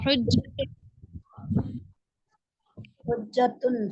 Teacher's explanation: جیم پر تشدید کو 2 بار پڑھیں گے، ایک بار خود اور ایک بار دوسرے حرف کے ساتھ